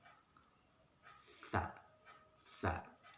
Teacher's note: huruf sa ini ujung lidah bertemu dengan ujung gigi dan sedikit dikeluarkan